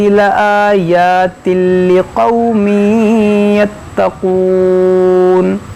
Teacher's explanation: یہاں پر ادغام کریں گے لقومی، ناک میں آواز جائے گی.